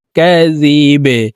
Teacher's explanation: কলকলার হরফ নিচের দিকে ধাবিত করে ধাক্কা দিয়ে বাকে সাকিন করতে হবে